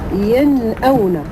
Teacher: تخرج النون الساكنة من طرف اللسان مع لثة الثنايا العليا. لثة ديال الثنايا العليا بمعنى المنبت ديال الأسنان، دون أن يصاحب ذلك أي حركة في الفم.